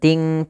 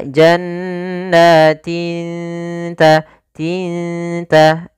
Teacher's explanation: Maka di sini samarkan kepada makhraj daripada huruf ta. Ta makhrajnya adalah ujung lidah kita menempel dengan gusi atas atau di perbatasan antara gusi dengan gigi seri atas itu. Maka lafalnya adalah jannatin, tin bukan ting ta, tapi dia jannatin ta, tinta.